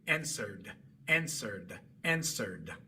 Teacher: después de haber pronunciado un sonido sonoro al final del verbo, saldrá naturalmente el sonido de la D y después de haber pronunciado un sonido sordo al final del verbo, saldrá naturalmente el sonido de la t si es que colocan su lengua en la posición correcta.